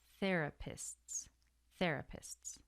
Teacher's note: You have the sts, so an S and then a TS.